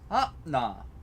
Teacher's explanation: akna two AK na which then later becomes ah nah because stops before nasals become glottal stops